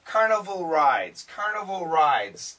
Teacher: the N kills the D carnival rides carnival rides sounds go together but we hear them